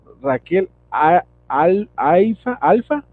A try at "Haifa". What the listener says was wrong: Se pronuncia Haifa. ¿Tú sabes que la H se pronuncia como J en español? Haifa. Haifa,